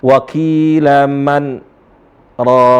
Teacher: Ketika membaca Al-Quran ada waktu jeda untuk diam. Tapi diamnya di sini tanpa napas untuk melanjutkan kalimat berikutnya. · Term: saktah